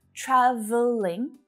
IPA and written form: 'træ v (ə) liŋ (TRAVELLING)